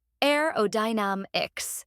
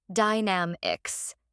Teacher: start with aerodynamics this word has five syllables a o damix make sure to stress the third syllable